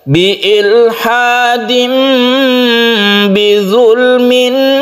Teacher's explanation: Iklab itu artinya tanwin bertemu dengan ba yang suaranya itu menjadi mem. Jadi iklab artinya membalik suara tanwin menjadi mem.